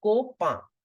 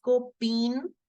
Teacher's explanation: the N is in the end so I'll keep it partially silent